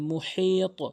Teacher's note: ওয়াকফ করলে মুহিত উপরের দিকে ধাক্কা, কারণ এখানে তটি উপর দিকে সাউন্ড হবে।